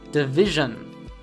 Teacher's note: The news division Many learners will actually pronounce division, which is incorrect. Instead, you should simply make a schwa sound for the vowels in the last syllable